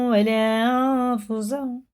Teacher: غنہ اور اخفا کر کے اس نون کو ناک میں ایک الف کے برابر چھپا کے پڑھنا ہے